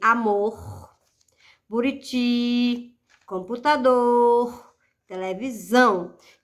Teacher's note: a sílaba tônica ou seja sílaba pronunciada com mais força é a última sílaba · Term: oxítonas, palavras oxítonas